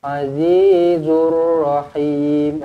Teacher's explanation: Rabbaka lahuwal azizur rahim. Azizur, alif lam syamsiyah di sini masukkan terus ke dalam huruf ra.